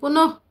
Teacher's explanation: র এর জায়গায় বিসর্গ দিয়ে দিচ্ছি, কিন্তু উচ্চারণটা করছি হয়ের মতো। পুনঃ বিসর্গের উচ্চারণটা আমরা করতে যেয়ে আমাদের ভিতর থেকে একদম পেটের ভিতর থেকে ধাক্কা দিয়ে বের হয়ে আসে, হয়ের মতো একটা উচ্চারণ আসে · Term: অঘোষ হ ধ্বনি